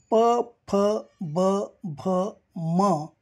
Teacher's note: प फ ब भ म या वर्णांचा उच्चार स्थान ओठ आहे